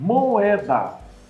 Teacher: duas vogais são bem pronunciadas e devem ser separadas Tá então não é uma união é apenas um encontro o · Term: encontro de duas vogais